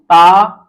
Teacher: ता जो है वर्गों का प्रथम वर्ण है, ये घोष नहीं है